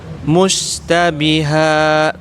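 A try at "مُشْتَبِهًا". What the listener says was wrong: Agak diangkat ke atas Ustaz lidahnya. Oke, mushtabiha. Jadi kurang ada namanya nanti sifat tafashi, menyebar dia. Anginnya.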